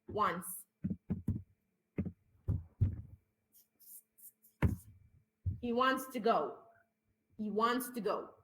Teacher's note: في الغالب التي اس في اخر الكلام احنا بنوقع التي